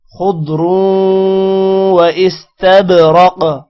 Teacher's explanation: استبرق با پر قلقلہ ہوگا، را موٹا ہوگا، قاف بھی موٹا ہوگا